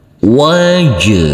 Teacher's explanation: huruf Jim yang bersukun ini harus kita pantulkan karena ini adalah bacaan Qalqalah